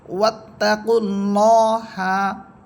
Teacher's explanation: এখানে আল্লাহ শব্দের পূর্বে আছে পেশ এখানে আল্লাহ শব্দ মোটা হবে